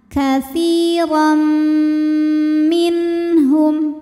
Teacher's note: maka tanwin lebur ke mim katsiran sambil didengungkan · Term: idgham bi gunnah